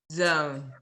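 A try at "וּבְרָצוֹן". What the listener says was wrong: I think you're having trouble pronouncing that letter. It's TS, S, T, not Z, not Z. TS, S,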